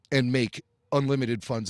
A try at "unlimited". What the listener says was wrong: Oh, you said unlimited. You said unlimited. I wanted you to really deliver that unlimited, because you're talking about Palpatine, unlimited funds.